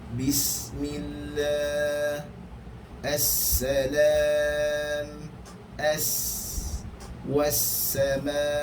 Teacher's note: Huruf sin mempunyai desiran yang sederhana. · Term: desir yang sederhana